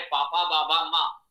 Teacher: पवर का उच्चारण स्थान ओष्ठ है, इसके उच्चारण में ओष्ठ दोनों परस्पर पूरी तरह मिलेंगे, तभी आप पवर का उच्चारण कर सकते हैं। · ओठ को मिलाए बिना पापा बाबा माँ आप नहीं बोल सकते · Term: पवर्ग